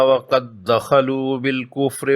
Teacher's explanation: مجزوم دال کو مشدد میں ادغام کر کے مشدد دال کو ہی پڑھیں گے۔ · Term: ادغام مثلین